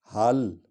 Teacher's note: ہا جو ہے یہ سینے کی ہڈی سے نکلے گی